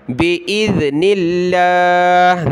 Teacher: لفظ اللہ سے پہلے نون پر زیر ہے تو لفظ اللہ کو باریک پڑھنا ہے